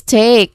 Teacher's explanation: There's clearly a dip thong here. E and I. So it's it it sounds like a. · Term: diphthong